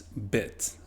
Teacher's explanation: the IH represents bit, a little bit lower lax vowel